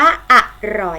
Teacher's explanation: สังเกตพยางค์ข้างหน้าออกเสียงอ่ะอ่ะพยางค์ข้างหลังออกเสียงเหมือนมีหอหีบมานำนะคะ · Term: อักษรนำ